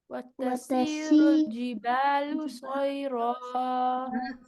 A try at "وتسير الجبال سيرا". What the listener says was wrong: سین وسل صوت نہیں ہے, سيرا.